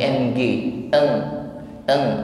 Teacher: ikhfa maka mengucapkan kasrah tanwin kita samarkan pada huruf Kaf ya ketika proses menyemarkan tanwin kepada huruf Kaf ada bunyi dengung ya dengungnya seolah-olah ada bunyi ng eng eng